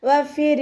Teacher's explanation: മേലെ മുൻപല്ലിന്റെ അറ്റം താഴെ ചുണ്ടിന്റെ ഉൾവശത്ത് വെറ്റായ ഭാഗത്ത് കൊണ്ടുവെച്ചിട്ട് ഉച്ചരിക്കുക · ഇവിടെ റോ താഴ്ത്തിയിട്ടാണ് നമ്മൾ ഉച്ചരിക്കുന്നത്. റോക്ക് സുക്കൂനും മുന്നേയുള്ള അക്ഷരത്തിന് കെസ്റയുമായാൽ റോ നമ്മൾ താഴ്ത്തിയിട്ട് ഉച്ചരിക്കും.